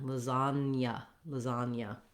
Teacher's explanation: even though there's the letter G, we have just the N sound, and then we don't have a letter for it, but we do have the Y sound after the N